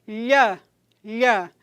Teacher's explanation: vejam que a parte medial da língua está se deslocando e batendo lá no palato duro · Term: palatais